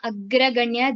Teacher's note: The first pada agraganya, there is a dvitva of ga, and agraganya chintya rupa is a dirgha.